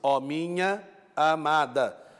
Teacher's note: duas vogais encontram-se dão lugar a uma só sílaba métrica